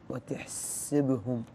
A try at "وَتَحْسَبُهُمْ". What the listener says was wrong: السين فتحة ساء